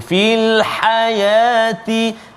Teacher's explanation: fil ha pedas di tengah halqum, fil hayati